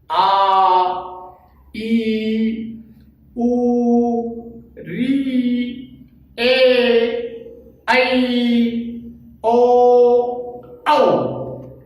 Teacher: इनके उच्चारण में जो ह्रस्व स्वर है उनसे दुगना समय लगता है, उनसे इनका दुगना समय लगता है, इसलिए द्विमात्रिक स्वर कहलाते हैं।